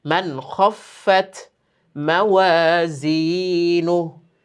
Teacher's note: এইখানে কিন্তু আবার মানে আমরা গুণনা করিনি কেন? নুন সাকিনের পরে খ, ইজহারের হরফ, কোনো গুণনা নেই।